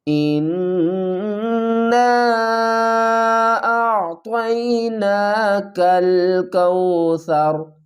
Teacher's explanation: حمزہ کو نون سے ملائیں گے، نون مشدد ہے، اس پر گنہ کریں گے۔ حمزہ نون زیر ان، نون الف مد زبر نا۔